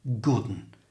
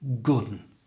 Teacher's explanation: the one simply became un and was joined together with the good so good one became Gooden